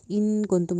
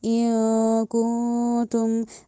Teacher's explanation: جس نون پہ جزم ہو اس پہ ہم نے غنہ کرنا ہے، ناک میں آواز تو لے کے جانی ہے لیکن اینڈ پہ سالڈ نون کی ساؤنڈ نہ آئے